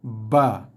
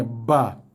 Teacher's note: So kalau huruf yang kedua tadi, ba, datangnya daripada dua bibir yang kita kacip sikit, bagi tekanan, lepaskan, buka dan lepaskan bunyinya